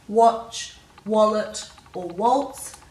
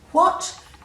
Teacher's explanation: Whereas if you say a word with an H after the W, like what, you can feel the air very definitely after the W